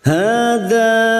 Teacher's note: Mad yang bertemu dengan Hamzah di lain kalimah Mad Jaiz munfasil lima harakat kita panjangkan hadzailla lam alif lam yang bertasdid masuk dulu illa lam alif